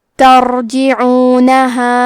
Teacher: کلمت ترجعونها میں حرف الرا ہے. یہاں را کا حکم ہے تفخیم کیونکہ را پہ جزم ہے، لیکن اس کے پہلے والے حرف پہ تا پہ زبر ہے، تو ہم حرف الرا کو موٹی آواز میں پڑھیں گے.